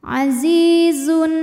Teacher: ada ya sukun didahului harokat kasrah, maka zai panjang 2 harokat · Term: Mad tabi'i dhahiri